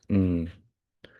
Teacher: If you look where the tongue is, it's at the top behind the teeth. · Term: N sound